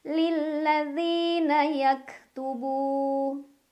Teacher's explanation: mad tabi'i karena ada waw sukun sebelumnya dhammah. Cara bacanya dipanjangkan 2 harokat.